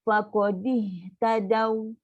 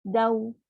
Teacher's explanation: So kenalah muncung. Waw kan huruf lin kita belajar muncungkan bibir untuk waw.